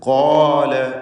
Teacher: ഇവിടെ ഖാഫിന് തഫ്ഖീം, അതിൻ്റെ ദീർഘാക്ഷരമായ അലിഫിനും തഫ്ഖീം കൊടുക്കണം. സ്വരഭാരത്തോടെ ഉച്ചരിക്കുക.